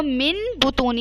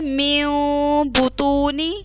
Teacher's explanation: آواز کو تھوڑا سا ناک میں چھپا کے پڑھنا ہے